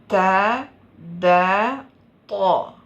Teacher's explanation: നാവിൻ്റെ അറ്റം തൊർഫുൽ ലിസാന് മേൽവരിയിലെ മുൻപല്ലുകളുടെ അപ്പർ ഇൻസിസേഴ്സിൻ്റെ കടഭാഗത്ത് അമർത്തുന്നു. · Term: ഹുറൂഫുൻ നുത്ഇയ്യ